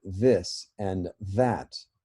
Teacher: dental at the tip of your tongue touching your teeth this is a fricative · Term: vocalized form